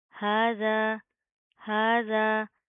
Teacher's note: ہاذا، ہاذا. ہا کے اوپر کھڑا زبر ہے، ایک الف کی لمٹ کے برابر کھینچ کر پڑھیں گے، ٹھیک ہے. زال کے ساتھ کا الف بھی پڑھا جائے گا.